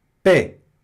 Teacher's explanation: Esse X não pronuncia, hein? Não é pex, não. É pé, só isso.